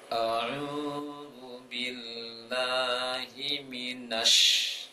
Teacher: Penting dalam pengucapan shin itu bibir tidak monyong, kemudian tengah lisan tekan ke langit-langit. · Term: tasdid shin